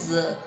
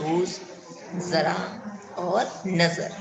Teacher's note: ऐसा लगेगा कि जो जीभ है दांतो के ऊपर थोड़ा सा स्पर्श करती है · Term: ज नुक्ता